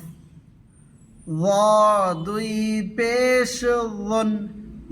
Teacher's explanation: জিহ্বার আগা সামনের দাঁতের আগা থেকে উচ্চারণ করবে মোটা করে, পুর করে